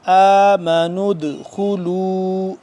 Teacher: اس پہ ہم قلقلہ کریں گے دال ساکن ہو گیا